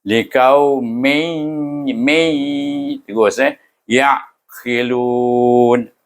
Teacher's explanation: Tanwin apabila bertemu dengan ya, dia kena baca dengan idgham ma'al gunnah, iaitu dengan dengung.